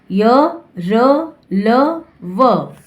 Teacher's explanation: इन व्यंजनों का उच्चारण करते समय जीभ मुंह के भीतरी भाग को मामूली सा स्पर्श करती है, इसलिए इन्हें अंतस्थ व्यंजन कहते हैं।